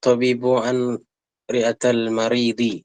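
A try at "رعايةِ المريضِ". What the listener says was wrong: Ri'atayi itu ya. Ini ada ya-nya. Ri'atai dia sukun. Sukun bertemu sukun gimana kaedahnya? Sukun bertemu sukun dalam bahasa Arab. Sukun pertama diubah jadi kasrah. Ri'atayil maridi. Itu cara bacanya.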